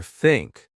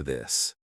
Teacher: Put your tongue between your teeth. Push air out for think. Add voice for this.